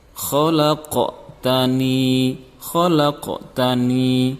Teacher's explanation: Jadi di sini qaf matinya itu dibaca memantul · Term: qalqalah